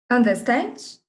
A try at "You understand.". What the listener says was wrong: Não, você só fez a entonação de pergunta. You understand? Entendeu? Mas you understand.